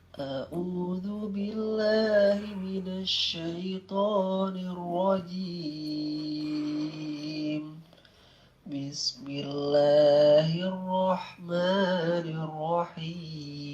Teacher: Ini naik datar turun tapi masih kecampur nada setengah ya, jadi belum stabil naik datar turunnya.